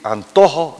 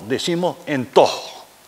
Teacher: el canario confunde la A con la E. Nosotros en vez de decir antojo, decimos entojo.